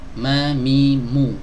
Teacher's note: keluar dari dua bibir gampang seperti kita mengucapkan huruf M dalam bahasa Indonesia